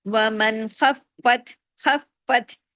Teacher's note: فا 2 دفعہ پڑھنے میں آئے گا تشدید کی وجہ سے